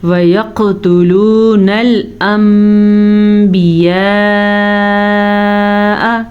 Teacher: نون ساکن کے بعد با آیا ہوا ہے تو اقلاب کا قاعدہ ہو رہا ہے. قاعدے کے تحت نون کو میم میں بدل دیں گے